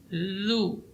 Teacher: ujung lidah di ujung gigi seri atas. Zu. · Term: za